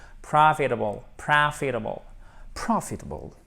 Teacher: notre pauvre T, il se transforme presque en de en American English